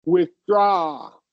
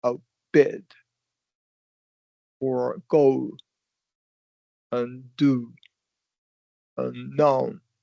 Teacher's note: We're gonna emphasize the second syllable. Your pitch is gonna go up on the second syllable.